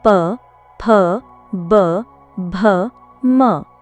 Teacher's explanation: इनका उच्चारण दोनों ओठों के स्पर्श या निकट आने से होता है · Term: ओष्ठ्य वर्ग